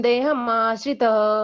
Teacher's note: इसका उच्चार विसर्ग अह ऐसा करते हैं